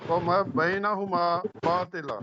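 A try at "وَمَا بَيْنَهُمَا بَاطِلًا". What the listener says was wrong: وما لمبا کریں نا ذرا، وما بینہما باطلا،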